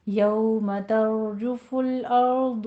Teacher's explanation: यौमा में वाउलीन दोनों होंठों को नातमाम गोल कीजिए